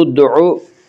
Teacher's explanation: دال میں قلقلہ ہوگا، دال حروف قلقلہ میں سے ہے۔